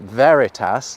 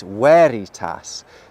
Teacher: They didn't have a V sound. Any classical Latin words that look like they have a V actually have a W sound. So, this word isn't veritas like we might think it is, it's veritas.